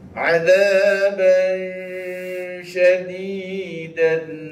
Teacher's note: Tanwin berjumpa dengan huruf shin, huruf shin, dibaca dengung disebabkan ikhfa, nama dia ikhfa tablighi.